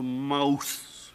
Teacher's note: the tongue became tired of holding the long ooh sound it began to waver and wobble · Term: Great Vowel Shift